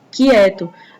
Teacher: A gente escuta o som do Q e do U como se fosse só o som do Q. E a gente escuta o som do I, o som do E, do T e do O.